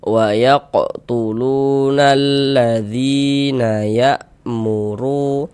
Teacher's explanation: Jadi huruf ro kalau dia memiliki harakat dommah atau harakat fathah ya, maka huruf r-nya itu dibaca tebal, dibaca tabkhim ya. Sehingga pangkal lisan kita, pangkal lidah kita itu ketika kita mengucapkannya itu dia naik terangkat